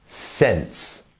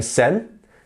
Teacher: It's very common to miss out that s, and you don't want to be saying sen, you want to say sense. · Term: that s at the end